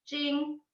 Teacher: so then that's the flat first tone · We have the flat line, which is just where it's within your own voice range. So it would be high and just kind of flat tone sounding.